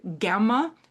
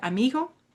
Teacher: like the G in the Spanish word amigo where you don't really say the G, you just sort of like lilt through it. So that's a fricative G.